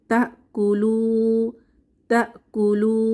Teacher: তা এক আলিফ টেনে পড়বো